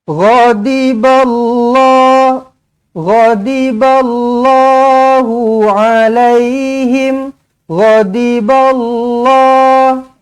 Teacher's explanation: Lafzul jalalah dibaca dengan tebal.